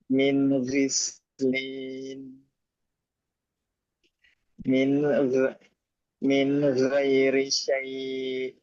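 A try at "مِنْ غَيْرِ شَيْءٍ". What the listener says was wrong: Min gho. Bukan ga. Gho. Min ghairi syai'.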